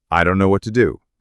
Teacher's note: The what to becomes what a intonation would probably fall at the end